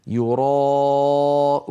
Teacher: الألف جاءت بعد الراء المفتوحة، والراء المفتوحة مفخمة كما سيأتي معنا، فلا يصح أن نرققها، يعني لا يصح أن نقول يراءون لم تفخم الراء ولا الألف بعدها.